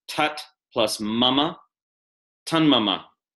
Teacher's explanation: Before a nasal, final T assimilates to N. · The T turns into an N, assimilating to any following nasal. A nasal, again, is any N or M sound.